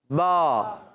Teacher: اب با کا مخرج دونوں ہونٹوں کا تر حصہ